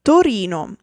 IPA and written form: toˈrino (Torino)